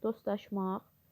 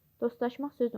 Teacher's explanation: Dostlaşmaq sözü ümumiyyətlə t yoxdur, çünki düşür.